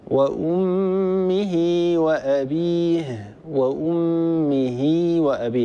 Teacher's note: وأمه وأبيه، وأمه وأبي، لاحظوا أني وصلت هاء الكناية المكسورة بياء لفظية